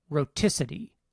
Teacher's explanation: the word roticity when the stress shifts to the second syllable the alveolar stop is still between two vowels but now the second of those vowels is stressed